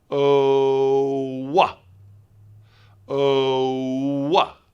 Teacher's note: by saying oh oh now notice as you use your lips your lips end up on this round position and at the end of that sound if you were to fling them open you would create the W sound